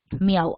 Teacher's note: I, A, U, 3 vocales seguidas. La I es una cerrada, la A es una abierta y la U es una cerrada. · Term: triptongo